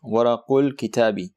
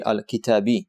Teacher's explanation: you're directly jumping from qaf to lam and skipping the alif. So if you were to read this as is, it would be al-kitabi, but since you're joining it, you're neglecting that alif, you're not pronouncing it, and thus it is titled hamzatul wasl.